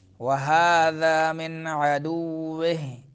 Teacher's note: نون ساکن کے بعد حروف حلقی میں سے عین آ رہا ہے تو اظہار ہوگا